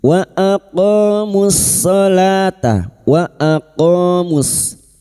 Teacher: qof fathah diguti alif dua harakat mad thabi'i